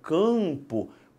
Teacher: quando eu falo campo parte do ar vai para o nariz por quê Porque a sua língua sob um cadinho e empurra